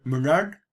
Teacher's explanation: The D following the rhoticized back vowel there would get retroflexed a little.